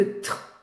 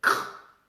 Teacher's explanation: Parce que tr, le r, ça s'articule en fond de gorge, r, k, aussi au fond de la gorge, alors que t, c'est entre les dents. Donc, tr, il faut aller très vite avec la langue pour taper devant pour faire le t et repartir au fond pour faire le r. Et du coup, c'est beaucoup plus facile pour un enfant de dire cr que de dire tr.